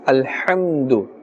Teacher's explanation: The ha, the makharaj is from the center of the throat. Alhamdu. Do not say alhamdu.